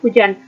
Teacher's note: bunyi frikatif glotis bersuara